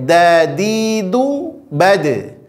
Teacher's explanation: ujung lidah ditempelkan ke usul as-sana al-ulya, ke tempat pertama tumbuh gigi seri atas. Cukup di makhrajnya saja dipantulkan.